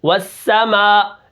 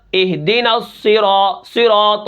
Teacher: تو سا کو نرم، سین کے اندر باریک سیٹی ہے اور صاد کے اندر موٹی سیٹی ہے